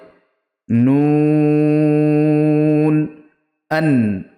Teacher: জিভের আগা ও তার বরাবর উপরের তালুর সাথে লাগিয়ে উচ্চারিত হয়